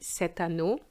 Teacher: we're going to make a nice liaison with the T